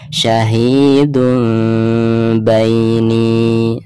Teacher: harus sambil disamarkan ya, atau meregangkan kedua bibir sedikit ya saat mengucapkan mim sukunnya